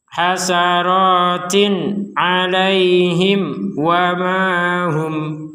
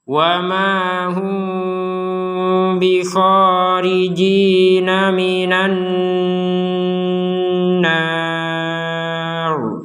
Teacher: Nah, wa mahum di sini walaupun sukun tidak tertulis tapi karena kita berhenti sehingga berhentinya kita tidak menggabungkan mim sukun dengan ba, maka mim sukun ini dibaca dengan jelas. Wa mahum jelas mim sukunnya. Ketika digabungkan dengan huruf ba, maka terjadilah samar.